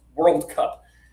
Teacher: If you've grown up in the USA, and you've been here for 47 years, you can say this like one syllable